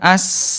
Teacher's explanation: Ini bunda kalau disukunkan insya Allah ini lebih nyentuh lagi ke mahrojnya dan lebih sempurna sifat hurufnya ya. Huruf sin dia lemah mengalir as